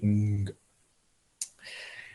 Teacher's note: The K, which would be the silent, the G which would be the voiced, and the NG, which is a dreadful combination because the N is way up front and the G is way up back